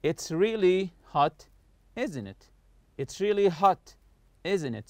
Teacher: falling intonation, meaning the voice goes down when we know the answer and are just asking for agreement. · So I'm not raising my voice in the question tag here. I just want you to agree with what I say.